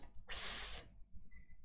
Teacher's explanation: the first one is an unvoiced sound it's a fricative and it's unvoiced or also voiceless